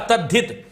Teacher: त का द बनेगा, ह का ध बनेगा